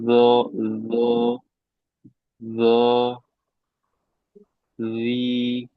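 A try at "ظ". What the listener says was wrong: nah ini kurang tebal. Masih zi, zoi, zoi, zoi. Nah, nanti kalau disandingkan dengan zal, nggak ada bedanya ya. Coba zi dengan zoi. Zoi, zi, zoi,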